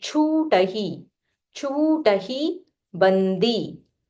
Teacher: This is Mahaprana cha. So not cha. You have to say with aspiration.